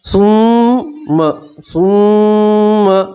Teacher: मीम के ऊपर तशदीद आप गुन्ना करेंगे।